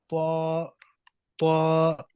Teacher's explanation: जुबान सामने ऊपर वाले मसूड़ों के साथ लगेगी, जुबान का जो सिरा है ऊपर वाले मसूड़ों के साथ।